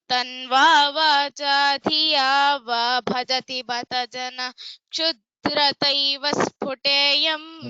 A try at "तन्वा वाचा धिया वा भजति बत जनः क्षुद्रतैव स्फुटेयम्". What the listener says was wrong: There, bhajati bata janaha, you have to give a stop. You cannot continuously say it. Give the visarga, janaha. If only the word janaha was there, how would you pronounce that? Similarly, you have to pronounce. There is nothing to join. Janaha, kshudrataiva sphuteyam.